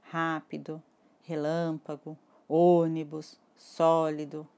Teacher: Quando eu falei todas essas palavras, vocês perceberam que a antepenúltima sílaba foi a tônica. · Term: antepenúltima sílaba tônica, proparoxítonas